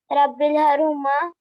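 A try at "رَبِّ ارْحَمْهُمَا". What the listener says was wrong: रब्बिरहमहुमा, हम, रब्बिरहमहुमा, हर नहीं हम, रब्बिरहमहुमा, अरे हर नहीं हम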